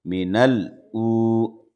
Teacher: واو ساکن سے پہلے پیش ہے اس لیے یہ واو مدہ مد اصلی ہے، دو حرکت کے برابر اس کو کھینچیں گے